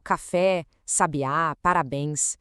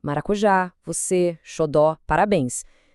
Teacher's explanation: A energia da palavra está toda ali, concentrada no final. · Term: oxítonas